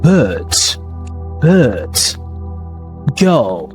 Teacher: is a central long vowel sounds which is pronounced in RP. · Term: nurse vowel